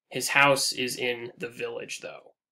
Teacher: We get the stressed, unstressed, unstressed in village, though.